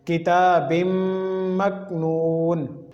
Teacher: یہاں پر کاف کو ہلانا نہیں کیونکہ یہ حروف قلقلہ میں سے نہیں ہے